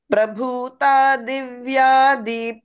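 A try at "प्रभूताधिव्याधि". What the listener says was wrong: రెండు రెండు చోట్ల మహాప్రాణాలు చెప్పాలి.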